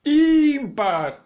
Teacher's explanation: O I é a sílaba tônica, uma paroxítona com acento.